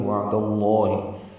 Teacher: وعد اللہ میں واو ہونٹوں کی نا تمام گلائی سے ادا ہوگی